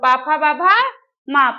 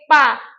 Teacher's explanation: पा में हमारे दोनों ऊपर के ओठ और नीचे के ओठ क्या करते हैं स्पर्श करते हैं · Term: ओष वर्ण